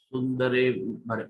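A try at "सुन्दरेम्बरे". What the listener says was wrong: You said it correctly the first time. Don't doubt yourself.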